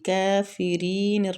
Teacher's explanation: کافرین را کو باریک پڑھیں گے کسرہ کی وجہ سے اور یا مد بھی ہو رہی ہے